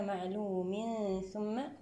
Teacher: نأتي بحكم الإخفاء الحقيقي بغنة مرققة المرتبة الوسطى